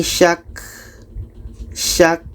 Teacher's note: Kita tekan dan dapatkan ka-nya. Ka yang mati adalah berangin.